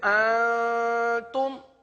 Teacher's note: انتم گنہ جو ہے یہ ناک سے ادا ہوتا ہے